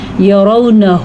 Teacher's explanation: انہم، نون پہ شد ہے تو نون کا غنہ ہم ادا کریں گے، یرونہ، ہا کو ہم چھاتی سے نکالیں گے